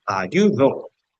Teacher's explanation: ayudó tiene una sílaba tónica, en este caso la última es la que más suena. ayudo, la que tiene más fuerza.